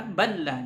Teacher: huruf lam yang melebur ke huruf lam, ya, seperti pada kalimat balla. Bal dengan lam, jadi dibaca balla, dileburkan ke huruf lam yang kedua.